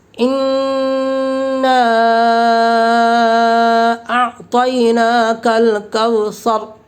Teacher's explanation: حالت وقف میں را پر ہوگی، کیونکہ را ساکنہ سے پہلے سا کے اوپر زبر ہے